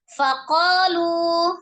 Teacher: dibaca 2 harokat, ada alif sebelumnya fathah di huruf qaf, maka dibaca 2 harokat. Faqalu, ada mad, ada waw sukun sebelumnya dhammah, mad ya, awalnya mad, tetapi dia bertemu dengan satu huruf dengan huruf alif ya, di beda kata ya, di beda kata menjadi mad jaiz munfasil.